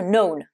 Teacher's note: Les K et les N, lorsqu'ils sont au début des mots, le K est muet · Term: K qui est muet